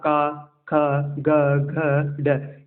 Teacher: का, ख, ग, घ, ड, ये आपके कंठ से बोले जाते हैं